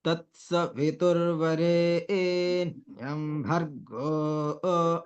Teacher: भर्गो ऐसा करके ओकार को नहीं करेंगे, ओकार को नहीं खींचेंगे यहाँ पे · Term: स्वरित